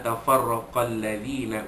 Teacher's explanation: ra bagi atas itu tafkhim, dibaca tebal